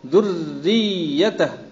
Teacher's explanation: پہلی را مشدد ہے تو وہاں بھی تھوڑا سا ٹھہریں گے، دوسری میں بھی ذریت.